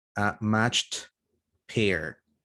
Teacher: match this one is a ch voiceless that's why it ends in a t sound